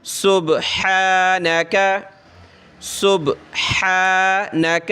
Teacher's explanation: پڑھنا ہے، کلر دیا ہوا ہے۔ سبحانک، سین با پیش صبح، ہا کھڑا زبر ہا، گلے سے نکالیں ہا ، سبحانک سبحانک، ایک الف کی لمٹ میں اس کو کھینچتے